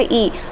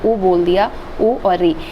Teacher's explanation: जिन स्वरों के उच्चारण में हम अपने मुंह का सबसे कम इस्तेमाल करते हैं। हमारा मुंह सबसे कम जिस स्वर को बोलने में खुलता है, मतलब लगभग बंद के बराबर होता है, वो संवृत्त स्वर की श्रेणी में आता है।